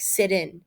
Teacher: he says sitting as if he dropped the final sound